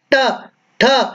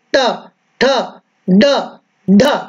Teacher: और जब उच्चारण करेंगे ट, ठ, तो ये जो हमारी जिह्वा है ये जिह्वा मुड़ती है और मुड़ करके मूर्धा को स्पर्श करती है